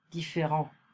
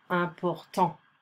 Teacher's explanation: So we don't pronounce the final consonant.